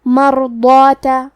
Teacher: ضاد کی ادائیگی زبان کے کروٹ اور اوپر کے داڑھوں کے جڑ سے ہے. ضاد حروف التفخیم میں سے ہے تو ہم یہ حرف کو بھاری آواز میں پڑھیں گے. · کلمت مرضات میں حرف الراء پہ جزم ہے تو ہمیں را کو ظاہر کرنا ہے اور ہم حرف الراء کو موٹی آواز میں بھی پڑھیں گے